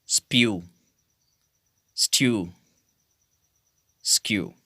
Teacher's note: voiceless stops are unaspirated after s sound